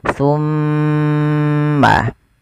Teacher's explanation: Ketika ada mimad, maaf, mim berharakat tasydid. Cara membacanya ditahan suara mimnya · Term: bacaan ghunah, gunnah